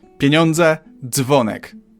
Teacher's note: Feels like this merge is simply the effect of reading d and z very fast.